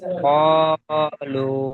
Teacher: দিকে আলিফের ডান দিকে আলিফের ডান যাবেন দিকে, আলিফের ডান দিকে যাবার আছে, তাই এটা আলিফ মাদ্দা। আলিফ মাদ্দাকে এক আলিফ পরিমাণ টান দিয়ে পড়তে হয় · ওয়াও মাদ্দা এক আলিফ পরিমাণ টান দিয়ে পড়তে হয় · ওয়াও ডান ওয়াও ডান পাশে, ও সাকিনের ডান দিকে ওয়াও পেশ সাকিনের আছে ডান দিকে পেশ আছে, তাই এটি ওয়াও মাদ্দাকে এক আলিফ পরিমাণ টান দিয়ে পড়তে হয়।